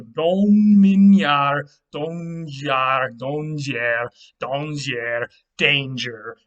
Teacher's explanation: So once again, you had unstressed vowels in the middle of the word kind of fall out, and then you had y sounds become j sounds